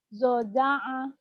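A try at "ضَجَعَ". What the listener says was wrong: zoja'a ainnya kurang ngeden ya zoja'a. Enggak berarti bacanya zoja'a enggak gitu ya tapi memang ngajarin orang tuh susah-susah gampang.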